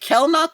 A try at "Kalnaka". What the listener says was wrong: Yes, Kalnaka. It's spelled like Kel, but I think it's Cal. Naka.